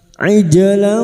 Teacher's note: aija jim sukun yang mati asli di tengah kalimat qalqalah sugra. Jangan lupa dipantulkan.